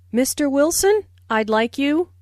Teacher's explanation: Notice the rising intonation on Mr. Wilson, which is used to address someone.